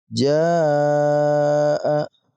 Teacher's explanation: Ada hamzah yang terletak pada satu kata. Maka kita baca 5 harokat ataupun 5 ketukan karena masuk dalam kategori mad wajib muttasil. Mad itu artinya kita panjangkan, wajib muttasil itu karena ada hamzah yang terletak di dalam satu kata bersama dengan mad tabi'i ini.